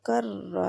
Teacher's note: रा के ऊपर शद है, कर और रा 2 दफ़ा रा पढ़ी जा रही है और रा में थोड़ा सा तकरार आता है, तकरार कर। जहाँ पे फील होता है आपकी, जहाँ पे मखरज है रा का, उधर फील हो रहा है कि तकरार पाया जा रहा है।